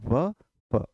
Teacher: व और फ दोनों में ऊपर के दांत नीचे के होठों को छूते हैं। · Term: दंतोष्ठ